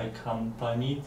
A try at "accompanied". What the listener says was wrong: It's N-I-D, not N. The E is not really pronounced when you're saying accompanied. You don't say accompanied. You say it, but when we're speaking, nobody says that. It's accompanied, like it's quicker.